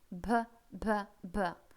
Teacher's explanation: Очень мягкий, очень. Никакого взрывного Б у нас быть не может здесь